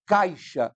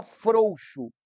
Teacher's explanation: o a é mais forte o i tem uma tonicidade menor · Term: ditongo decrescente